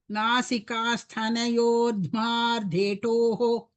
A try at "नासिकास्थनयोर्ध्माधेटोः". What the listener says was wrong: You are telling Dhmardetoh. It is not Dhmar. That ra comes before Dhma. Nasikastanayordhmadetoh.